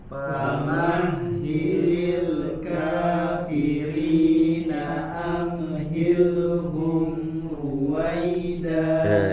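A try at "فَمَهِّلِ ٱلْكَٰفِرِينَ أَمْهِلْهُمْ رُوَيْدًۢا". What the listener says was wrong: Jangan juga dipantulkan ya, jangan juga dipantulkan. Jangan amhilhum ya, jangan amhilhum, jangan dipantulkan ya. Tahan suaranya di makhraj tidak dipantulkan ya, tetapi juga tetap mengalir suaranya. Amhilhum ruwaida.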